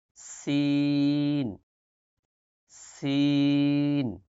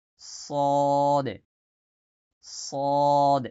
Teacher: সা শব্দ হবে এরপর সদে সদে সদ একটু মোটা করে সদে সিন পড়ছি পাতলা করে কিন্তু সদ মোটা করে সদ স এরপরে দ দাল চিকন করে দ মোটা করে দ